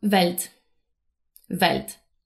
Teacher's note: the letter W in German is pronounced more like the English V. In linguistics, we call this a voiced labial velar approximant. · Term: the V sound